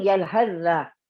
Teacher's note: Masuk ke dalam dal terus. Seolah-olah ta enggak ada lagi.